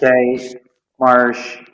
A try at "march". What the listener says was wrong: No, you're saying marsh. March.